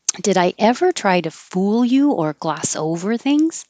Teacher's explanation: Gloss over is a phrasal verb, so we're putting the emphasis on over. It's kind of unusual to emphasize a preposition, but it goes together with gloss.